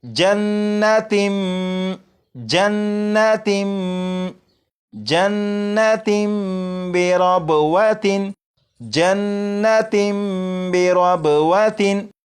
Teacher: اسی طرح جہاں پر بھی تنوین ہو، تنوین کے بعد با آ جائے تو تنوین کے اندر جو نون ساکن ہوتا ہے اسے میم سے بدل کر غنہ کر کے پڑھیں گے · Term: اقلاب